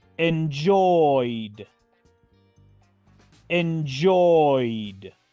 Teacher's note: pronuncio entonces la terminación Ed como la letra d así de fácil sin pronunciar la letra e